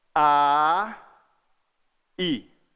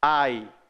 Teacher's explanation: O a tá chegando, o i já tá vindo, ó. Ó, ai. Eu não paro de falar o a para falar o i. Eles quase juntos.